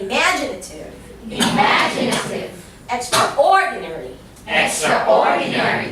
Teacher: So my tone would start from low, going up. So I'd say imaginative, going down.